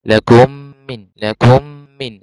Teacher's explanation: هندخل الميم، ميم الاولى في الميم الثانية وتبقى ميم واحدة مشددة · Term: ادغام صغير